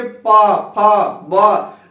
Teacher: देखिए दोनों ओठ स्पर्श कर रहा है आपस में, तो तब जाके वर्ण उच्चरित हो रहा है। तो क्या हो जाएगा, ये ओष्ठ वर्ण।